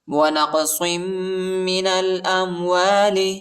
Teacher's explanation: نون کو لام کے ساتھ ملائیں گے، الف نہیں پڑھا جاتا، الف پر حرکت نہیں · صاد کو میم کے ساتھ ملائیں گے، میم پر شد آیا ہے اور غنہ کریں گے